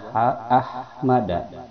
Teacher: ada ha ya di tengah tenggorokan itu makhrajnya ha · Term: Hamas